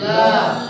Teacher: तो ल तुम जीभ जो ऊपर सटा हुआ रहता है लेकिन तुम ल बोलने में जो हवा मुंह से निकल रही है वो दोनों साइड से निकल रही है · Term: पार्श्विक व्यंजन